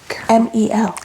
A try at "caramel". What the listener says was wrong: Caramel. No. There's an A in it. Caramel. Caramel. No, think about it like, you know how Coloradans, like, they don't say the T? I guess it's kind of like that.